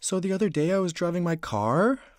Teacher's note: This is called rapport-seeking tonality, also known as uptalk. It's the vocal pattern where the inflection of your voice curves upward at the end of the sentence and it makes it sound like you're asking a question, even if you're making a statement.